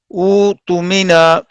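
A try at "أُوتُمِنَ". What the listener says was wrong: ٹھیک ہے، نا نہیں ہے، او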